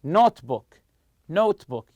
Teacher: notebook notebook you stress the word note